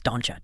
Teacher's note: if the word ends in a T, like don't, the T crashing into the yay creates a chi sound.